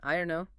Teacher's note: Say it with a simple falling tone. I don't know.